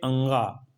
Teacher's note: यह सघोष भी है अल्प प्राण भी है और नासिक वर्ण भी या नासिक व्यंजन भी है फिर वर्ण नाम है तालव्य उच्चारण